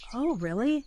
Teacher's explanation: Yes, >> we are learning that when someone says they are excited about something, the socially appropriate expected English response is to ask why using a very specific rising intonation